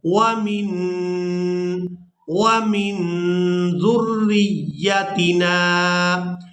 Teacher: اپنی آواز کو ناک میں چھپائیں گے جب ہم نے نون کو ادا کرنا ہے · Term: اخفا